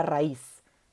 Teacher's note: la cerrada va a tener la mayor fuerza de voz